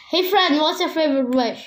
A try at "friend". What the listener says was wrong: It's not Fred, it's friend.